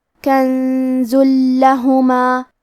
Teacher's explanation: ہم یہ تنوین کو لام میں ملا کے بغیر غنہ سے لیکن تشدید کے ساتھ یہ حکم کو ادا کریں گے